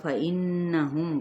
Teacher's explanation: غنہ کرتے ہوئے آگے بڑھیں گے تو میم پہ اظہار شفوی